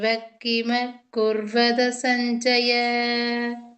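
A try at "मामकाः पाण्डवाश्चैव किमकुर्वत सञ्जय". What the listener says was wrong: இது வந்து பாண்டவா அந்த பிரேக் கொடுக்க கூடாது மாமகண்டவாவ அந்த இடத்துல பிரேக் கொடுத்துட்டு கிம குர்வத சஞ்சய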